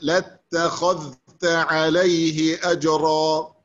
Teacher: التاء مرققة، انتبه، التاء مرققة والخاء مفخمة